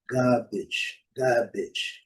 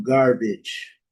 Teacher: no inglês britânico, eh, antes de vogal o R não é pronunciado